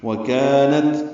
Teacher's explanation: کاف الف مدہ ہے، باریک پڑھیں گے، 2 حرکات لمبا کریں گے